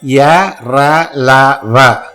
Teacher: These are all soft consonants as well as non-aspirate, alpa prana. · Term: semi-vowels